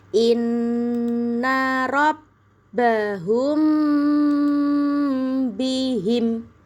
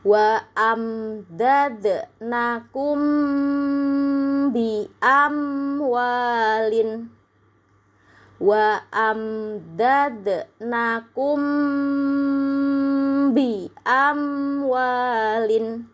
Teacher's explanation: Kalau ada mim sukun ketemu sama huruf ba, dibaca dengung yang lama. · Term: ikhfa syafawi